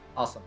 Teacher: You need to really emphasize the aw sound at the beginning of the word for a New York accent.